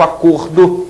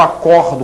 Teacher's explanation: é diferente o sentido é sempre diferente né então o ver o substantivo acordo tem um som fechado o verbo acordo que tem um som aberto